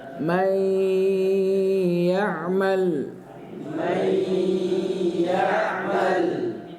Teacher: karena dia ketemu dengan ya salah satu dari yanmu maka dia didengungkan ditahan dua harakat